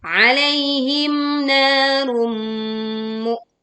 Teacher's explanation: Domah tanwin bertemu mim, maka kita meleburkan dengan dengung